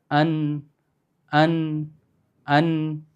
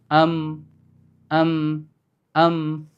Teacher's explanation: ശബ്ദം എവിടുന്ന് വരുന്നത്? മൂക്കിൽ നിന്ന് വരുന്ന കാണാം. അൻ. അല്ലെങ്കിൽ കൈവച്ച് നോക്കി നോക്ക്.